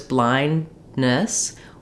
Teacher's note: releasing so what we tend to do is blind blindness where we close for the N Stop a little bit for that buildup of pressure of the D but rather than du letting